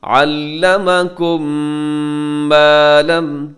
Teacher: ادغام، جسے کہا جاتا ہے ادغام شفوی، تو ساتھ آواز کو ناک میں بھی لے کے جائیں گے